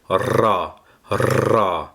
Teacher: le RA c'est un r mais un r roulé comme en espagnol